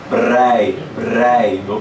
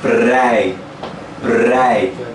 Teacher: Aí devido ao R, vira uma tremidinha na boca.